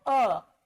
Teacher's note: तो अ में जीभ का मध्य भाग प्रयोग में आ रहा है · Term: मध्य स्वर